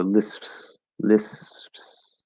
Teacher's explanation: instead of doing a full P sound, we'll kind of get close to the P and then open back up and keep the S going. So like, so I'm not actually ever closing, I'm just holding that S, right? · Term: drop the P